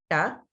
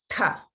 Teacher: So the ta is the retroflex ta, but it's also Maha prana.